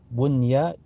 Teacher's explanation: Contoh ad-dunya, bunya ya, nun sukun ketemu ya, bunya bukan buya tapi bunya dibaca jelas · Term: idhar mutlak